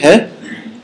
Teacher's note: It's a fricative concerning the manner of articulation. It is a fricative, okay, because the air keeps flowing. You don't block it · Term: glottal